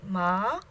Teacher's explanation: that tone mark would go over the a second tone mom starts medium in tone then rises to the top